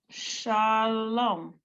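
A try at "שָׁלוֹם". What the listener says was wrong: The only thing I would say is don't read it with a question mark. Read it like a confidant. People will believe you. People will believe that you know it if you don't ask permission, which is adding that question mark.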